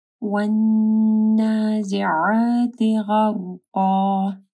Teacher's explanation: نون کے اوپر شد ہے، ٹھیک ہے، یہاں پہ غنہ ہوگا